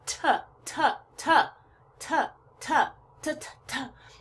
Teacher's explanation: sound but if I make the T sound the unvoiced consonant the sound is coming only from my mouth there's no sound coming from my throat at all · And I can hear the T sound coming out of my mouth. If I hold my hand up to my throat, there's not any vibration or very little.